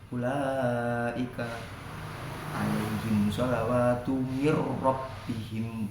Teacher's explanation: Wajib dibaca jelas, kalau ketemu ra digetarkan secara jelas. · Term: idgham bila gunnah